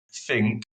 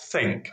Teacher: somebody says think or think right with a f sound or a th sound